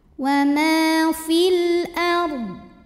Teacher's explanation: Karena alif lam menghadapi huruf qamariyah yaitu hamzah, maka lam sukun dibunyikan dengan jelas atau disebut dengan idhar qamari.